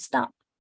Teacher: the second sound in stop is not a T, it's a D sound, stop. Feel it, you're just tapping it.